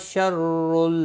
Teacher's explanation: را دو پیش کی وجہ سے پر پڑا جائے گا